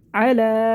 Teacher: ہے، کھینچنا نہیں، نہیں کرنا ہے، لام کو کھینچ لیں گے، کھڑے زبر کو ایک الف کے برابر، علا 1 سیکنڈ کے برابر کھینچنا ، یا کو نہیں پڑھیں گے، عین با زبر عب، علا